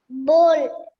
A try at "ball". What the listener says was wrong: It's not bowl. Ball. Ball.